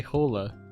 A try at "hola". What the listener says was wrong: I think the H is silent in that, isn't it? Like hola.